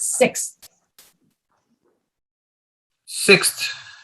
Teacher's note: you have that x sound and then an s sound and then a th sound